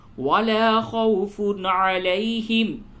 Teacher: ولا خوف واو سے قبل زبر ہے, یہ واو لین ہے, نرمی کے ساتھ پڑھیں